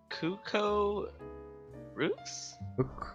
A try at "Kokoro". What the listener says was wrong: Kokoro. Yeah, Kokoro, right? Kokoro. No, you don't pronounce the X. Kokoro is like the Japanese one. But this is, I think her name's probably French. Kukuru. I think it's like Kukuru.